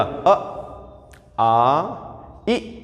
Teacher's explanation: और जिनके उच्चारण में होठ ना हो गोल, वो कैसे? आवृतमुखी होते हैं।